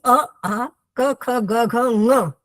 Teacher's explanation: जैसे एक सूत्र है अकु विसर्जनीय नाम इति कंठः यानी अ आ क ख ग घ ये कंठ से बोले जाते हैं